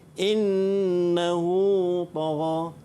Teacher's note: cara bacaan bagi mad silah qasirah ni 2 harakat.